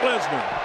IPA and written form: ˈlɛznər (Lesnar)